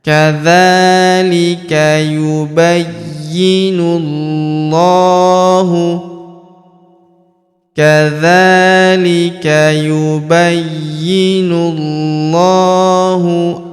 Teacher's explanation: huruf nu langsung sambung ke huruf lam pada lafaz Allah atau lafzul jalalah.